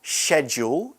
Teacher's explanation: It'll be more of a sh sound instead of a sk sound.